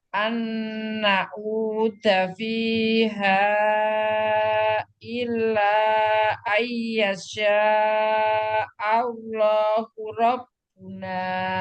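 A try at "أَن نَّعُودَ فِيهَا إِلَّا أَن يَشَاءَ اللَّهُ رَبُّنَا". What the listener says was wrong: Oke, lanya kurang. illa fiha dengan illa itu sama panjangnya ya. Oke, V-nya jangan panjang. Fiha, dua aja V-nya.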